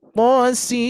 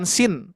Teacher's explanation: Jadi bukan sin. Jadi nunnya itu dileburkan, ya. Dileburkan memasuki ke huruf mim. Cuman catatan harus 6 harokat, ya. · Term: diidghamkan